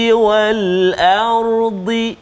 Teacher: huruf ra yang sukun ataupun mati, sebelum dia hamzah tu baris atas, maka ra dia kena tebal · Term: huruf ra yang dibaca tebal